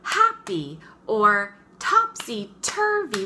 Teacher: the first one is stressed and the second one is unstressed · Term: trochee